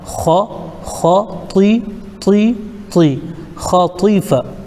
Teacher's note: یہاں پہ خا بھی پر پڑھنا ہے اور طا بھی پر پڑھنا ہے